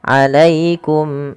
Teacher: ya sukun bila didahului fathah maka ia bacaan lin, lembut di dalam pelafalannya.